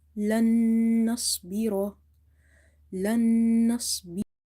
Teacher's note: ra is having fatha, so we will read it heavy.